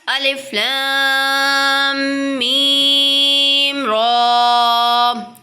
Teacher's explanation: الف لام میم، دیکھیں یہاں پر ہم غنہ کریں گے، میم ساکن کے بعد دوسری میم آ رہی ہے تو کیا ہو رہا ہے، ادغام شفوی ہو رہا ہے تو غنہ کریں گے